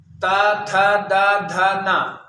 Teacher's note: दांत में ता, था, दा, धा, ना, अर्थात जो ता वर्ग है, ता वर्ग के सारे अक्षर दांत से निकलते हैं